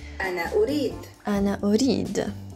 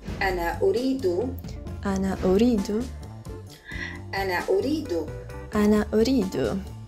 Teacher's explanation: if there is another word coming after urid, you may want to hook an O sound at the end